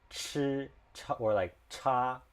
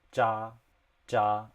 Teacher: it's like a breathier version of ja